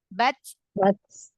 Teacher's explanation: Jadi syiddah dulu, tertahan dulu suaranya di makhrajnya, baru dialirkan nafasnya, ya. Nah, tapi juga jangan kelamaan. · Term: hames